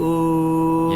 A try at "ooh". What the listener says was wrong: Yeah, so can you just literally open your mouth a little bit, ooh, versus ooh, ah, ooh, and then you're there. So that's more of the all vowel I'm actually doing. So notice how it feels closer to the ooh vowel. You could still open a little bit more, but less like ooh, ah, it kind of completely spreads and breaks.